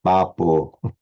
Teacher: attempt to make it a nice pure Indian O rather than an English O